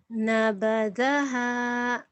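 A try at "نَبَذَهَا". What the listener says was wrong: Nabadaha. Bagus ya, tenang aja.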